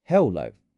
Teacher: Hello has two syllables. Hello. The stress is on the second part. · Notice how your voice rises.